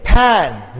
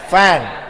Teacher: What we are doing? We are joining our upper teeth to the lower lips. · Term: labiodental